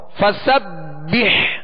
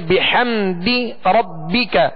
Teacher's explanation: آگے ہا ہے، ہا وسط حلق سے ادا کریں گے